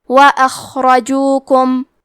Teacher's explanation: کلمت اخرجوکم میں خا کو موٹی آواز میں پڑھیں گے اور اسے ہمزے سے بھی پڑھیں گے۔ حرف الراء پہ زبر ہے تو حرف الراء کا حکم ہے تفخیم، ہمیں یہ حرف کو موٹی آواز میں پڑھنا ہے